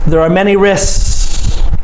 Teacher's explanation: But so you must say the SK, risk. But when you put the S on, when I say it, I don't say the K.